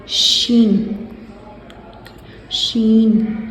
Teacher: श जुबान के बीच का हिस्सा ऊपर सख्त तालू में लगाएंगे तो शन का मखरज अदा होगा।